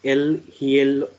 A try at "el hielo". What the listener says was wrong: H will be silent, so it will be simply yellow. Yes, El yellow,